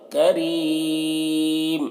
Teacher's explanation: را کو باریک پڑھیں گے اور زیادہ کھینچ کر روکیں گے